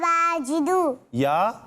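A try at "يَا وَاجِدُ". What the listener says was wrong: ارے باجدو نہیں ہے، واو کے ساتھ ہے، واجدو، واو کے ساتھ، یا واجدو پڑھیں۔ یا واجدو نہیں ہے، یا واجدو۔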